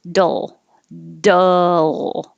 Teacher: so you're holding it in the l position and making noise · So from the D, since the D and the L are made in exactly the same place, you're just going to quickly start in the D position and pull it down and back up.